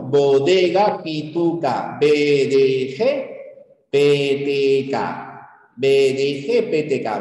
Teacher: hay un cierre completo y luego hay una explosión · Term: fonemas oclusivos